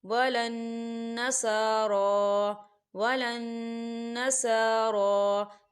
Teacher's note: نون مشدد ہے تو یہاں غنہ ہوگا، سارا کھڑی حرکات ہے، دو حرکت کے برابر کھینچ کے پڑھیں گے۔